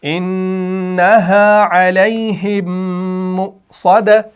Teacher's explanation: دیکھیں انہا علیہم مؤصدہ، تو میم ساکن کے بعد یہاں پر میم مشدد آ رہا ہے، یعنی جب میم ساکن کے بعد میم مشدد آ جائے تو وہاں پر آپ کا ادغام ہوتا ہے، لیکن ادغام شفوی